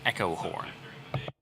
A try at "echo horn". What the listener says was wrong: You were lacking an N there for a second.